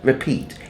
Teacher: the word repeat, the accent is on the second syllable, right? Peat.